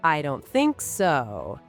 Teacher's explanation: I don't think so has a falling intonation at the end.